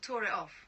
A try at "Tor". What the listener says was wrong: You're saying Glastonbury tour. The mound. T-O-R. You're saying tour. You're saying tour. T-O-R.